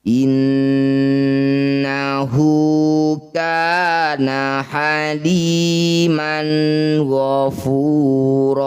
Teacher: Innahu nun bertasydid disebut bacaan gunah musyaddadah. Bunyi nun dengungkan dua harakat. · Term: gunnah musyaddadah